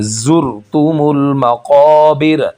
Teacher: زا کی آواز صحیح، زی آواز سیٹی والی آنی چاہیے